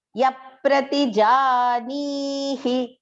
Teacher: Here ja and ni is long, do not make it short. Janihi, that he is short.